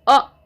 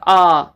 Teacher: अ बोला था तो सिर्फ एक पलक झपक का समय लगा था यहां पर आ यानी कि दो बार पलक झपक का